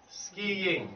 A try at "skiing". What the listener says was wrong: Yeah, your ing needs, your ng needs work.